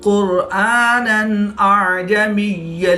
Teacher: دو زبر کے تنوین کے بعد حمزہ حروف حلقی میں سے ہے تو یہاں پر اظہار ہوگا، غنہ نہیں کریں گے بلکہ تنوین کو ظاہر کر کے پڑھیں گے۔